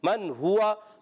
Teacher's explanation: نون کو ظاہر کر کے پڑھیں گے, غنہ نہیں کریں گے. من ہوا, ہا پر پیش ہے, واو پر زبر ہے, اور گول ہو جائیں گے دونوں میں, اور حرکات کو بغیر کھینچے ادا کریں گے. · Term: اظہار حلقی